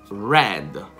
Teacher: Quando viene pronunciata non è un suono come quello italiano, perché la R in italiano è un suono vibrante, quindi la lingua vibra. In inglese, indipendentemente se stiamo nel Regno Unito o in America, la R è un suono retroflesso.